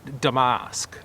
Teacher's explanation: the emphasis on the first syllable and the second usk is a different sound than what I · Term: British pronunciation